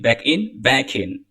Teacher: you link back and in